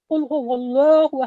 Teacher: جب لفظ اللہ کے لام مشدد سے پہلے فتحہ یا ضمہ ہو تو اس لام کو ہمیشہ پر اور موٹی آواز سے ادا کیا جاتا ہے